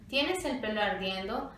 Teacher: En cuanto a su pronunciación, la entonación del hablante nos indica si su actitud es exclamativa.